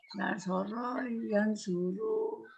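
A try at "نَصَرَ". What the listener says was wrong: Ke bawah bacanya. Nasoru. Nasoru.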